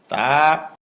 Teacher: জিহ্বার আগা উপরের দাঁতের গোড়ায় ভিতর দিয়ে লাগবে, মুখ খুলে দিবে, এক আলিফ পরিমাণ লম্বা হবে।